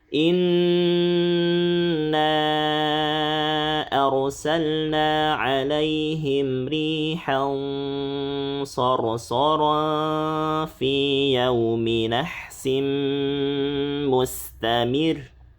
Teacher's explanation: Tapi sekarang di sini ada tanwin bertemu shad. Nah, ini berarti ikhfanya tafkhim tebal ya.